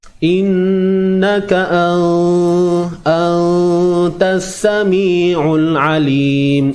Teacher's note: Dengung tu dah betul dah, ikhfa tu dah betul dah. Cuma kadar dengung itu dilakukan terlalu menonjol sangat. Maksudnya kaedah tu bukan di situ sepatutnya, ada di tempat lain.